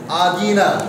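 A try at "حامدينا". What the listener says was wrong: হ্যাঁ আদিনা, দালটা একটু নরম হবে, কেমন?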